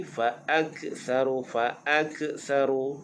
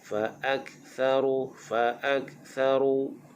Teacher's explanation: mahmus ni artinya berangin, tetapi jangan sampai fa'aktharu dah jadi qalqalah